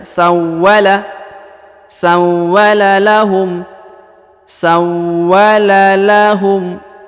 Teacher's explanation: huruf wa ditahan dan ditekan ya